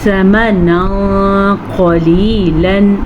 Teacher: ہم نون ساکن تنوین کو چھپے ہوئے غننے کے ساتھ پڑھیں گے، اسے کہتے ہیں اخفاء کا قاعدہ · قاف موٹا بھی پڑھا جائے گا کیونکہ حروف مستعلیہ میں سے بھی ہے